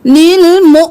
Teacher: हमजा के ऊपर जज़म है तो झटका देंगे